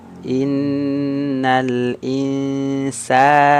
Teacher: insana sa panjang dua harakat ya vokalnya a